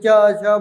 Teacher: च जब बोलिए तो आपका जीभ कहाँ जाके लड़ेगा? आपके तलवे में ऊपर लड़ता रहेगा।